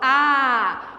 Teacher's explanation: eu falo A com a boca aberta e o som passa livremente